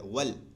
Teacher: واو دونوں ہونٹ کی گلائی سے ادا ہوتا ہے